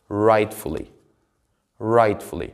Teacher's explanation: rightfully is a word which has three syllables and the stress of the word would be on the first syllable